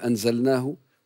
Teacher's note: لديك ضعف في حرف الهاء خاصة حال الوصل تظهر كأنها همزة مسهلة